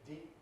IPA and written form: diːp (deep)